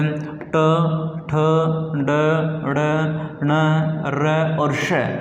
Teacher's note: ये सारे के सारे मुर्दा से उच्चारित होते हैं, इसलिए इनको मूर्धन्य व्यंजन बोलते हैं।